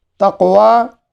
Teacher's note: قلقلہ اس پر قاف پر ہے، حرف قاف پر قلقلہ ہے اور یہ قلقلہ صغرا ہے